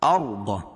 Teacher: ارض، را ساکن سے پہلے زبر یا پیش ہو تو را کو پر پڑھیں گے، ضاد کو موٹا پڑھیں گے کیونکہ حروف مستعلیہ میں سے ہے